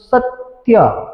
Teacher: છે એ જોડાક્ષરનો છે અને ત જે છે એ જોડાક્ષરના લીધે ત ના લીધે સ ઉપર ભાર આવે છે